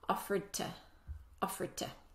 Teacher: The rule is when we have a D sound before a T sound, the D sound disappears. So when this word is said by itself on its own, it sounds like offered.